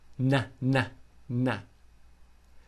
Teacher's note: the tip of the tongue is touching the roof of the mouth